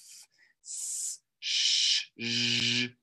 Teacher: Fricatives comes from the word for friction. So you can hear audible friction coming from my mouth.